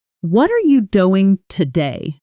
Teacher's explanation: Notice how doing and today jump out while what are and you almost blur together. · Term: natural stress